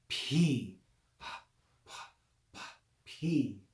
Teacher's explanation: That's actually what this letter, we could say phi to pronounce the vowel correctly, but even more perfectly, it's P. It's a combination of a P with aspiration or breath.